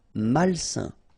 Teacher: A-I-N together, it's a nasal and it's un.